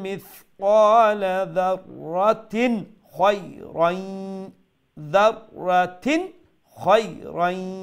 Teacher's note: যাররাতিন তিন যে তার নিচে তানবিন এটা স্পষ্ট হইব, এটার গুণ হইতো নাই। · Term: ইজহার